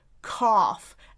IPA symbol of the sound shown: f